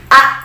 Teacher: Nah, jadi ilmu tajwid itu membahas salah satunya mengenai makharijul huruf, tempat keluarnya huruf. Seperti a, dari mana keluarnya a atau hamzah, itu dari aqsal halqi atau pangkal tenggorokan